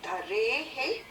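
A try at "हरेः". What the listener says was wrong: Harehe, it is not dharehe. When you separate it, it becomes again harehe. Harehe is a Hari's 6th case.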